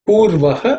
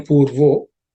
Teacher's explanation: Purvaha has become purvo again because of sandhi. The visarga has become o